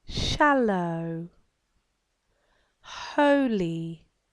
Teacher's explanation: my tongue is making a very brief visit to the alveolar ridge and coming away again so that the next sound can be pronounced